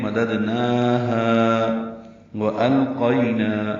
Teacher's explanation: واو ہونٹوں کی نا تمام گلائی سے ادا ہوتی ہے، حمزہ کو لام سے ملانا ہے، لام ساکن ہی پڑھا جائے گا۔